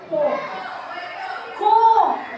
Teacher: O primeiro co é a sílaba tônica, mais forte. Então ela é uma paroxítona que terminou em o.